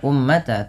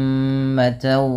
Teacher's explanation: pada lafal mim berharakat tasydid, ini ditahan dulu bunyi suara nya sepanjang 2 harakat karena terdapat hukum tajwid berupa bacaan gunnah. Maka jangan hanya sekadar ummata, tapi ditahan dulu ummatawa.